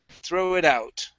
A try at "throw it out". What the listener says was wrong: Give me good T's instead of a Spanish T.